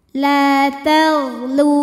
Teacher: Sebab ada waw sukun didahului baris dhammah, maka huruf lam panjang 2 harokat. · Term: mad tabi'i zahiri